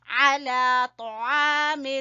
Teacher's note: طا کو پر پڑیں گے اور عین کو کھینچیں گے الف کی وجہ سے